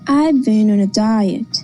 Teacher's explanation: the falling tone indicates new information